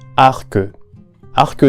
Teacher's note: the last letters of the words are not normally pronounced but in this case the C is not only pronounced but we can also hear a vowel that is not represented in written language